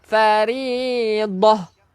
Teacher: Bila kita berhenti jadi ha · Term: Bunyi ha